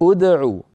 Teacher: اركض ادعو بدانا بهمزه مضمومه لان العين مضمومه